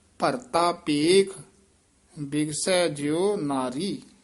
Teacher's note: ਭਰਤਾ ਇਹ ਤੱਤੇ ਦੇ ਨਾਲ ਹੀ ਉਚਾਰਨ ਕਰਨਾ ਹੈ। ਭਰਤਾ ਧੱਦਾ ਨਹੀਂ ਬੋਲਣਾ।